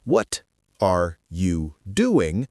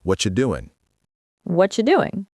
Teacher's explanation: The T in what and the Y in you combine to make a ch sound. What you becomes whatcha.